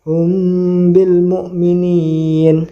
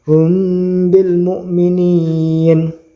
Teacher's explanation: itu ya jadi mimnya dibaca samar dan juga berdengung Hum mukminin dengungnya kira-kira dua ketukan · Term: Ikhfa Syafawi